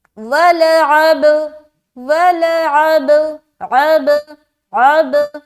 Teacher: آگے وَلَعَبْدٌ، واو زبر وا، لام زبر لا، ولا عین با زبر عب. اب یہاں پر با کے اوپر سکون ہے تو یہاں پر قلقلہ کریں گے کیونکہ با حروف قلقلہ میں سے ہے.